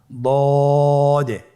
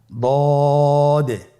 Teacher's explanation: দদ হারাফটি উচ্চারণ করার সময় অবশ্যই তিন আলিফ টেনে পড়তে হবে